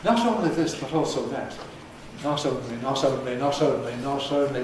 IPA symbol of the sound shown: t̞